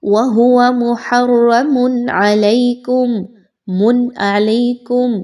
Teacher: عین جو ہے وہ حروف حلقی میں سے ایک ہے اور نون ساکن یا تنوین کے بعد اگر عین کا حرف آ جائے گا تو وہاں پر تنوین کی یا نون ساکن کی آواز کو بڑا کلیئر کر کے پڑھا جاتا ہے، کسی طرح کا رکا نہیں جاتا، غنہ نہیں کیا جاتا